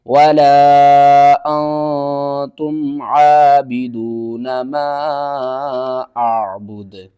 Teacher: وقف کی صورت میں دال کو ساکن کریں گے اور دال کے اوپر قلقلہ بھی کریں گے